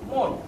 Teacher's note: নিচে একটা হসন্ত চিহ্ন দিয়ে আমি নয়ের অর্ধেক উচ্চারণ করি। যেহেতু হসন্ত চিহ্ন দিয়ে আমি নয়ের পরে যে একটা অ আছে এই অটা উচ্চারণ করি না, সে কারণে এই শব্দটি মন শব্দটি আমার উচ্চারণ করার সময় এই নয়ের অর্ধেক উচ্চারিত হয়, আই মিন ব্যঞ্জন বর্ণ দিয়ে শেষ হয়। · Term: ব্যঞ্জনান্ত শব্দ